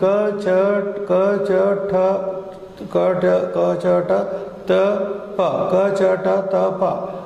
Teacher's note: beginning from the throat, ending with the lips.